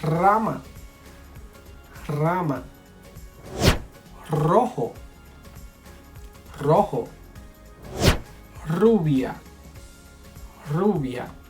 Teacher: at the beginning of the word, anytime you see an R, a single R, the sound is strong. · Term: strong R